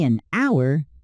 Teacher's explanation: We say an hour because the H is silent.